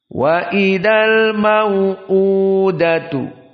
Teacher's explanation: qasr mad badal dibaca Hanya dua harakat